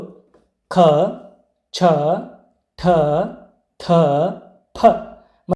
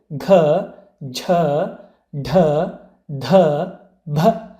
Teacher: ಹೆಚ್ಚು ಪ್ರಾಣದಿಂದ ಅಂದರೆ ಹೆಚ್ಚು ಉಸಿರಿನಿಂದ ಉಚ್ಚರಿಸಲ್ಪಡುವಂತಹ ಅಕ್ಷರಗಳೇ ಮಹಾಪ್ರಾಣಗಳು. ಉದಾಹರಣೆಗೆ ಪ್ರತಿ ವರ್ಗದ 2 ಮತ್ತು 4ನೇ ಅಕ್ಷರಗಳು ಮಹಾಪ್ರಾಣಗಳು ಅಕ್ಷರಗಳಾಗಿವೆ.